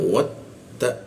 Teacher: ujung lidah bertemu gigi